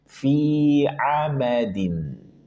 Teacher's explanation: Dibaca dua harokat. Fi hanya dua harokat, jangan sampai dipanjangkan lagi.